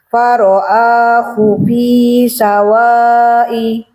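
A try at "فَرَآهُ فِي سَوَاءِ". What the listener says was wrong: Kurang panjang waknya itu ini apa? Itu 3 harokat kayaknya ya. Sawa'i.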